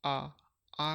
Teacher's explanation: जैसे आ का आप उच्चारण करोगे तो दोस्तों मुख द्वार देखना दोस्तों पूरा खुलेगा आपका